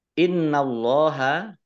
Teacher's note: Nun tasydid ini dibaca ghunnah ditahan dua harokat Allahnya dibaca tebal karena harokat di depannya fathah lam fathah berdiri